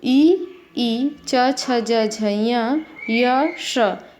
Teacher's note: इचु यशानाम तालुः, ई च छ ज झ य श, एतेषां वर्णानाम उच्चारण स्थानम तालुः